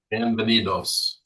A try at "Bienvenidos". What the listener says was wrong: Yeah. Good.